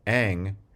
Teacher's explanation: Ma, bilabial, na, alveolar, and ang, which is a velar nasal